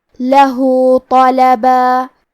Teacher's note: کلمت لہو کے آخری میں ہا پہ الٹا پیش ہے، یہاں حکم ہے مد صلہ صغرا تو ہم اپنی آواز 2 مد کے برابر لمبی کریں گے